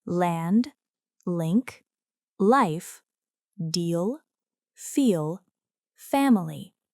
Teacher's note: The letter L is pronounced as in land, link, life, deal, feel, family. This is a voiced sound. The tongue touches the ridge behind the upper teeth. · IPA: /l/